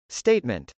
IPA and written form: stˈeɪtmənt (statement)